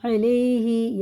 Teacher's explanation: یا ساکن سے پہلے زبر ہے تو حرف لین ہے، جلدی پڑھیں گے اس کو